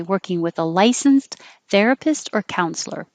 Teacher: it is a little unusual to have two stressed words right next to each other but you have to have a pause in between them